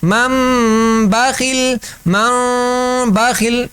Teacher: نون ساکن یا تنوین کے بعد با آ جائے تو دونوں میم بن جاتے ہیں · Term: اقلاب